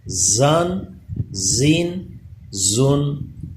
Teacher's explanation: زا پہ زبان دانتوں کے ساتھ ٹچ نہ ہو بلکہ اس پہ تھوڑا دبا کے سیٹی پیدا ہو